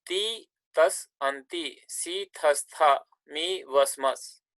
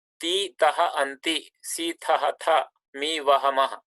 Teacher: final Sa becomes Visarga due to Sandhi